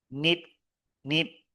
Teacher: the T or a D ending is so short that they sound the same.